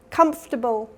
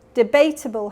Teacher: Comfortable has first syllable stress. Debatable has second syllable stress. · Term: stress pattern